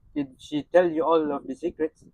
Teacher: We see aspiration on the voiceless alveolar stop in tell.